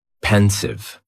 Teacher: And the pronunciation is very easy, just 2 syllables. And the stress is on that first syllable.